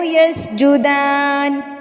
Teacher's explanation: دال کھڑی زبر دا، ایک الف کے برابر لمبا کریں گے اس کو۔